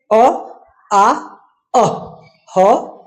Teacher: ध्वनि सीधे जब गले से निकले तो उनका उच्चारण स्थान हो जाएगा कंठ। जब जीभ किसी भी अंग को ना छुए और ध्वनि जो है गले से निकले तो उच्चारण स्थान उनका हो जाएगा कंठ